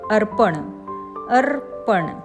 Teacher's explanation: र चा उच्चार पहिले आणि अर्धा म्हणजेच हलंत करायचा आणि [संगीत] प चा उच्चार नंतर आणि पूर्ण करायचा उदाहरणार्थ अर्पण